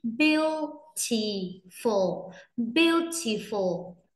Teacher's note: Từ có ba âm tiết ạ, nhấn mạnh cho em âm đầu tiên ạ. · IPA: /ˈbjuː.tɪ.fəl/